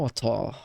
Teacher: Você vai ter o A muito mais acentuado, os R's somem todos, eles só viram você prolonga a vogal anterior.